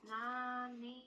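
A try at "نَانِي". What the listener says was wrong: Tidak masuk ke hidung. Naninu. Ninya masuk ke hidung nih. Ni, keluarkan suaranya.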